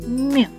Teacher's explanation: коли ми вимовляємо звук м наші губи щільно зімкнені А ось язик не лежить спокійно у ротику його спинка вигнута